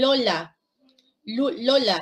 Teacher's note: la punta de la lengua, el ápice, se dirige detrás del diente en el inicio del paladar. El inicio del paladar empieza con este bultito que está detrás de los dientes y se llama alveolo. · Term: sonidos alveolares